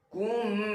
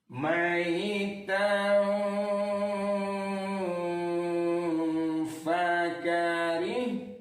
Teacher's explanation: Jadi kalau ada nun mati bertemu dengan salah satu huruf yang 15 ini, dibaca samar-samar antara kedengaran nun dengan tidak, antara masuk kepada huruf sesudahnya dengan tidak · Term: ikhfa hakiki